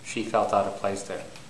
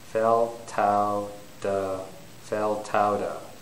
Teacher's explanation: So if the T is between the vowels, it becomes a D. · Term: linking